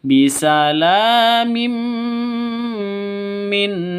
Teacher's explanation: Nun tanwin bertemu dengan mim cara bacanya masuk ke mim disertai dengung dua ketukan karena idgham bunah idgham itu masuk bighunah dengan dengung masuk ke